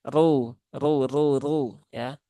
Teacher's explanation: ro-nya berbaris dhammah, maka dia dibaca dengan tebal, yaitu dengan menaikkan pangkal lidah ya.